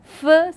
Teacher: it is labiodental, fricative and voiceless